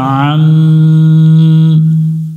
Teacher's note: আইন অক্ষর আছে, গলা চেপে উচ্চারণ করতে হবে। মিম অক্ষরের উপর তাসদিদ আছে, এখানে গুন্না করতে হবে, গুন্নাটা করা হচ্ছে ওয়াজিব, না করলে গুনাহ হবে।